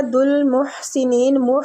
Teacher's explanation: ہا جو ہے وسط الحلق سے نکلے گا